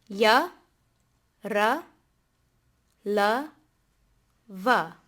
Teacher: First, we have the semivowels, which are pronounced with voice but no aspiration